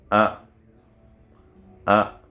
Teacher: Lorsqu'on dit A, tu vois que le Hamza, ça bloque ici au fond de la gorge.